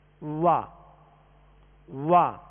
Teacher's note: واؤ کا مخرج ہی ہونٹوں کی گولائی ہے